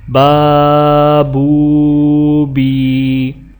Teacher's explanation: یہ حروف ایک الف کے برابر کھینچ کر پڑھے جاتے ہیں، جسے مد اصلی کہتے ہیں۔